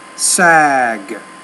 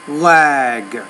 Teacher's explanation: when you have the g at the end the vowel needs to be longer